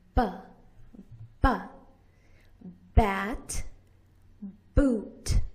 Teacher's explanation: You put your lips together and push out. Your voice box is on.